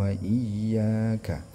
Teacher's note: Iya, yang iyanya ini pertama dia ditasydidkan dulu, kemudian baru dipanjangkan. Na'budu wa iyyaka ya, wa iyyaka juga panjang 2 harakat.